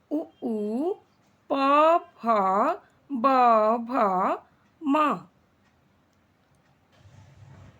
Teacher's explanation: अगला श्रेणी जो ओष्ठ है और इसका उच्चारण स्थान दोनों होठ होते हैं और इनमें आने वाले वर्ण जो दोनों होठ की सहायता से बोले जाते हैं